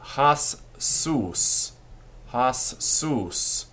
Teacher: The first time, the shva is not pronounced. The second time, it is.